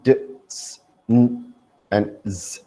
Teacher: they're pronounced with the front of the tongue on the alveolar.